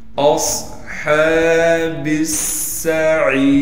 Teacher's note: اصحاب السعیر، سین پر تشدید ہونے کی وجہ سے تھوڑا ٹھہراؤ کریں گے، اور عین کے بعد یا مدہ ہونے کی وجہ سے عین کو ایک الف کی مقدار کھینچیں گے، را کو بالکل باریک پڑھیں گے. · با کو پھر ہم سین سے ملا دیں گے کیونکہ سین پر تشدید ہے